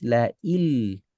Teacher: Nah, ini kan otomatis la il nun sukun berubah jadi lam il, bukan la il masih ada ke hidung, nggak boleh. Jangan la il masih ada sifat nun, nggak boleh masih ada sifat nun, masih sengau, nggak boleh. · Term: lebur sempurna